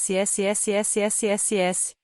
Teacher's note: Dê a letra S a um som sibilante e agudo semelhante ao que produzem os freios de ar.